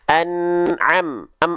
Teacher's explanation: Maka mimnya cukup kita lafalkan tanpa bunyi vokal. Kalau ada bunyi tanda petik macam ini, bunyikan dia tanpa bunyi vokalnya, tanpa bunyi vokal a i u. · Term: mim sukun